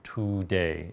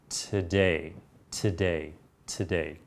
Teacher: that word very even I'm hearing two today instead of today when I say the first syllable it's not only very short but the vowel quality changes it's no longer an O as in two it's an a sound as in fun or money